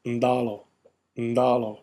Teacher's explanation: in Fijian, it's pronounced ndalo, ndalo, with that prenasalized consonant nd